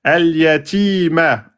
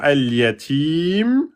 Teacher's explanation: le mim prend soukoun, précédé par une prolongation, 2, 4, 6 temps. Al-mad al-aridu li soukoun.